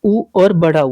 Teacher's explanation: उ और बड़ा उ जब आप इसका उच्चारण करोगे तो जो होंठ होंगे वो गोलाकृति के बनेंगे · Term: वृत्तमुखी